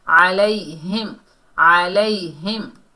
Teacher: یا ساکن سے پہلے زبر ہے، یہ یا لین ہے، نرمی اور جلدی سے ادا کریں گے، ہا کو میم سے ملائیں گے، یہاں میم ساکن کا اظہار ہوگا، اظہار شفوی کا قاعدہ ہوگا علیہم علیہم۔